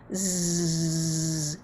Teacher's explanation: it right and so when we say some letters some sounds our voice box wiggles vibrates and we call that voiced